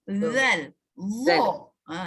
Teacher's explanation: Dan seterusnya misalnya huruf za dengan zal yang sama makhraj. Za dengan zal sama makhraj, iaitu hujung lidah terkeluar sikit pada gigi.